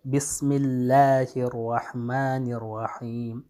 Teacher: یہاں لفظ جلالت کا جو لام ہے اس سے پہلے میم پر کسرہ ہے تو یہاں پہ ترقیق ہوگا